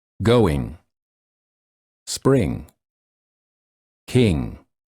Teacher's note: the back of the tongue touches the soft palate in the back of the mouth, and the air flows out of the nose